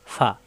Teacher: উপরের দাঁতের আগা নিচের ঠোঁটের পেটে লাগবে